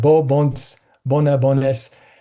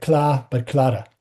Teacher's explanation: So n and r delete word finally.